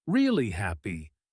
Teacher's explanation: Stressing really heavily, almost slowing down on it.